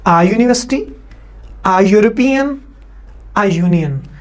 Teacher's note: तो इन तीनों वर्ड्स को पढ़ने से ये की आवाज आती है, अलिफ की आवाज नहीं आती